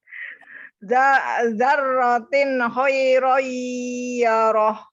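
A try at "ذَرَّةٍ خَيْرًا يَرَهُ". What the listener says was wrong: ya, betul. Lanjut.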